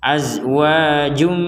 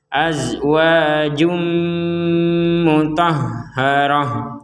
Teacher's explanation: Ada tanwin, ada dhammatain bertemu mim dimasukkan.